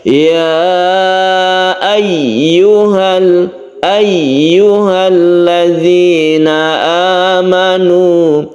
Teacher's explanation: Kemudian hati-hati di tasydid ya ini. Tasydid ya ini kita tekan ke ya-nya ya, jangan sampai mengambang tapi kita tekan ke huruf ya, atau istilahnya itu kita tabrakkan ke ya.